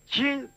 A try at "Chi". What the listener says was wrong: Deja la lengua dentro.